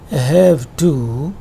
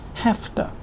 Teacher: In have to, f sound consonant is voiceless, t is also voiceless, and it is because of the effect of t that v is pronounced as f sound, and it is just like this, have to. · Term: assimilation of voiced to voiceless